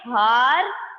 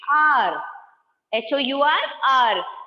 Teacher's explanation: क्या आप ह की साउंड दे रहे हो? नहीं.